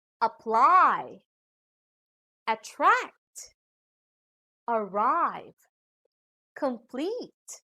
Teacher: These are two-syllable verbs with long vowels and diphthongs, so we put the stress on the second syllable.